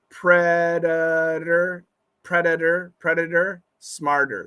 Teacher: smarter those are with flap T's it's tough so remember when you see a flap T think of it as a d but it has to be fast